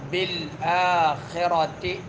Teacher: اوپر نیچے ہونٹ جب آپس میں مل جائے اور دونوں ہونٹوں کے تری والا حصہ آپس میں مل جائے تو با ادا ہوتا ہے، اندرونی تری والا حصہ۔ بالآخرۃ، خا جو ہے زبان حلق کے اس حصے سے جو منہ کے قریب ہے وہاں سے ادا ہوگا، خا غین۔ آخرت را پر پڑھیں گے، تی، تا کے نیچے کسرہ ہے، اس کو زیادہ کھینچیں گے نہیں، تی نہیں کہیں گے، تی۔ · لا یؤمنون بالآخرۃ، با جو ہے شدیدہ حروف میں سے سختی کے ساتھ ادا ہوتی ہے، یہ حرف سختی کے ساتھ ادا ہوگا۔ اوپر نیچے ہونٹ جب آپس میں مل جائے اور دونوں ہونٹوں کے تری والا حصہ آپس میں مل جائے تو با ادا ہوتا ہے، اندرونی تری والا حصہ۔